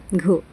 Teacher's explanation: वर्ण आहे घ ज्यामध्ये ह चा आपल्याला उच्चार आभास होतो बघा घ म्हणताना ह चा आभास होतो त्यामुळे यातील जो पर्याय चार आहे घ हा आहे महाप्राण वर्ण